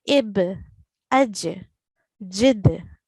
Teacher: Ba, Jim, and Dal will be pronounced with a thin jerk, tarqiq.